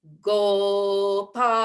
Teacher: Go is strong and it's a low note. Gopaha. Then we open our mouths and open our throats for the last vowel.